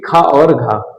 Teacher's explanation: ये महाप्राण यानी कि जिसको बोलने में ज्यादा वायु हमारे मुंह से निकलती है